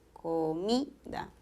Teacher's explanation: En comida, el acento está en mi